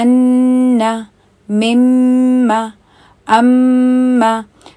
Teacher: جو نون اور میم کا جو مخرج ہے اس میں ناک بھی شامل ہے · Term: غنّہ